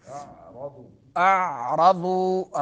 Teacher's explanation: حمزہ جو ہے حلق کے اس حصے سے جو سینے کے قریب ہے